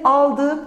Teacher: Al, gördüğünüz gibi yine dı değil, bir dık ekim var ve ı eki geldiği zaman da buradaki k sesinin yumuşayarak yumuşak g'ye dönüştüğünü söyleyebiliriz. Yani biz bu dık dik eklerinde çoğunlukla k sesinden yumuşak g'ye olan bir dönüşümü görüyoruz arkadaşlar.